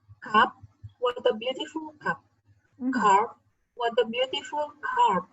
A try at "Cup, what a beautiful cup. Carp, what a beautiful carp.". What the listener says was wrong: Okay, good. Thank you so much.